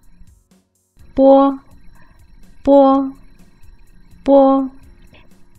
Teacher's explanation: Have you noticed that your lips were forming an o shape?